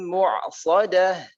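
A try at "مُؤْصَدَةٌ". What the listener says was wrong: Ayat ke-8 itu hamzah bukan ain. Innaha alaihim muqsadah, laisa mu'sadah, muqsadah. bukan mu'sadah, muqsadah, hamzah mu.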